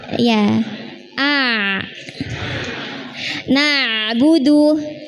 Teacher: ain sukun itu punya sifat pertengahan antara mengalir dan tidak. Jadi ketika sukun bukan a, alirkan sedikit a, ya a.